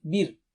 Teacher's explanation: بیر پہ را باریک ہوگا موٹا نہیں